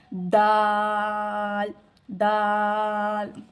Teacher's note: अपनी जुबान की नोक जो है सामने के जो दो दांत है अपने उन दांतों की जड़ से अदा होता है। · اپنی زبان کی نوک جو ہے سامنے کے جو 2 دانت ہیں اپنے، ان دانتوں کی جڑ سے ادا ہوتا ہے